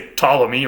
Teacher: we usually just leave the P off altogether because we don't like to say words that start with PT with no vowel between them